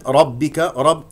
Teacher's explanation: والباء كما ذكرت انها شديده مجهور لا تخرج معها هواء